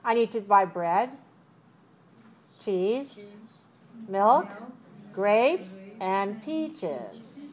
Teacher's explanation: rising falling right so depends on how many things i have if i have five things I rise rise rise rise and fall